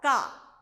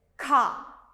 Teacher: Before it was Ka. Now it is Kha. A small H sound.